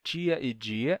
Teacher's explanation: o i e muitas vezes o e pode causar palatalização de consoantes